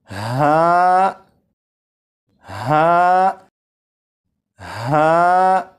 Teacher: हलक के नीचे वाले हिस्से से अदा होता है। और जब इसे पढ़ेंगे तो आवाज जरा भारी हो।